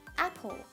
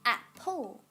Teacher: when we pronounce the word apple, ap is stressed, apple, pull is unstressed. So when we say apple, there is a stressed syllable and an unstressed syllable.